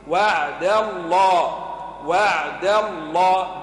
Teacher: وعد الله اسم الجلالة كله مفخم إلا الدال مرقق